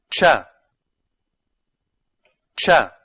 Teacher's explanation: They are a combination of a stop and a fricative that make one new sound. For example, when pronouncing cha, the tongue begins with pronouncing t, which is a stop, and ends with pronouncing sh, which is a fricative. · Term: affricates